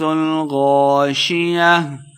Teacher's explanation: غاشیہ، غین کو موٹا پڑھنا ہے۔ شیہ آخر پہ تا گول تا ہے تو وقف کریں گے، ہا کی آواز آئے گی